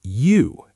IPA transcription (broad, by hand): juː